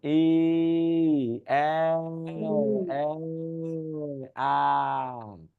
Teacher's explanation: মুখের অবস্থা চিকন থেকে হতে হতে বড় হয়